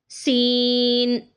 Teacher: تھوڑا سا زیادہ لمبا کریں گے کیونکہ 3 حرفی ہے، لیکن سیٹی لازمی آنی چاہیے۔